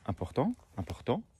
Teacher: donc on accentue sur la dernière syllabe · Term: accentuation